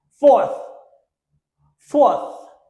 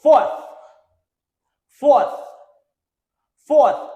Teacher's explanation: The TH sounds like vous mettez la langue entre là-dedans et vous poussez l'air là, sans vibration.